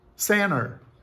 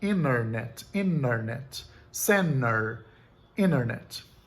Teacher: O T é simplesmente dropped. Ele não é produzido de forma alguma. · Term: dropped T